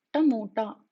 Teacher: It is called as Retroflex version, which means to achieve these sounds, you need to curl the tongue back and touch the tip of your tongue to the roof of the mouth or your palate. So while pronouncing these consonants, you need to make sure that you curl the tongue back and touch the tip of the tongue to the roof of the mouth.